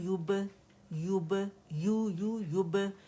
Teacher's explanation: یو کو لمبا نہیں کریں گے کہ مد بنے، ٹھیک ہے. جسٹ ہم نے یا دمہ کو کے ساتھ ادا کرنا ہے اور گولائی دینی ہے، ٹھیک ہے.